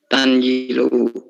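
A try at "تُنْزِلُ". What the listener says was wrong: Iya, jadi pakai Doma. Tunjilu.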